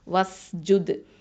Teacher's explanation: Okay, அங்கே ஹம்சு பண்ணணும், வஸ் ஜுத். தால் வந்து என்ன பண்ணணும், கல்கலத்து சுகரா கொடுக்கணும்